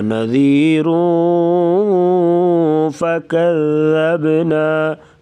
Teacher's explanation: نذیرون یہاں پر اخفاء مع الغنہ کر کے پڑھیں گے